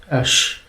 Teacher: it was more of a sh sound, a sh, than an S sound or an H sound